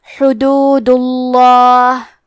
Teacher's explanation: لفظ الجلالہ کے لام کا حکم ہے تفخیم تو ہمیں حرف اللام کو موٹی آواز میں پڑھنا ہے